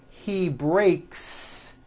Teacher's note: the S you add also remains unvoiced